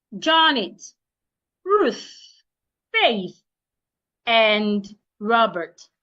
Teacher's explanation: Now, as I approach the last one and Robert, the tone of my voice comes down.